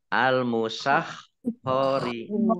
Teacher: khok ya, di tenggorokan, khok